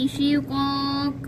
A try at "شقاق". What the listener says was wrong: मोटा और कलकला नहीं किया शिक़ाक़ ओ मोटा शिक़ाक़